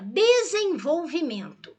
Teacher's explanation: Eu tenho esse EN aqui, que eu pronuncio como um E nasalizado. Então, isso é dígrafo.